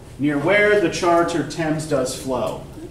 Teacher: It's a heavy, choppy, slow rhythm